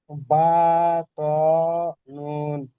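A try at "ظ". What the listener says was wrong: ত নয়, উপরে একটা নোক্তা রয়েছে, ত হবে না, জ হবে। বা, জ, নুন।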